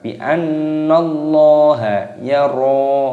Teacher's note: nunnya di sini digunnahkan, didengungkan. Bi annallaha yara, ro-nya dibaca panjang.